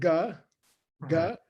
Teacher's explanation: Yeah, a ga. So say ga, ga. Your throat closes towards the back.